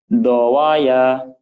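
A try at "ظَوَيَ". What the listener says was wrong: Zo. Do-nya bulat. Zowaya.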